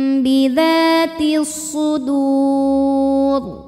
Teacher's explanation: alif lam menghadapi huruf syamsiyah yaitu shad, maka alif lam tidak dibaca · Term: alif lam syamsiyah